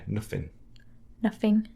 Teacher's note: the th sound is going away in London